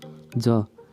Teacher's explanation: ज उच्चारण प्रयत्नको आधारमा स्पर्श सङ्घर्षी हो। प्राणत्वको आधारमा अल्प प्राण हो।